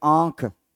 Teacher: अनुनासिक स्वर जिसको हम मुख और नाक दोनों से बोलते हैं